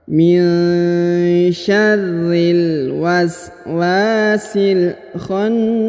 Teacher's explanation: Kemudian huruf na ditahan dan ditekan lalu dipanjangkan 2 harokat ya. Ditahan dan ditekan 2-3 harokat huruf nanya, lalu dipanjangkan lagi 2 harokat.